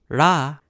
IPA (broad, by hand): ɽ